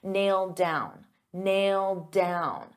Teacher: But we have nailed down. So because I have a D sound on down and these two go together, I'll pronounce it as one and you'll only hear one D sound